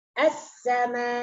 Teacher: ketika mewaqaf pada perkataan as-sama, boleh ya kita mewaqafkan dengan panjang 4 atau 5 atau 6 harkat.